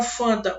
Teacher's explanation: o N vai nasalizar essa vogal anterior